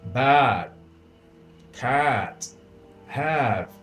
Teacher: Observe que esse A ele é bem longo, ele chega a ser superior à duração do nosso A de casa, porque ele se assemelha como se fosse um E que termina num A. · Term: A bem longo